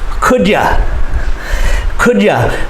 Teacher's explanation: Many times we change you to ya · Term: reduced forms